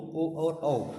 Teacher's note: कंठोष्ठ दोस्तों कंठ और ओष्ठ से मिलकर बनते हैं, इसलिए इनको बोलते हैं कंठोष्ठ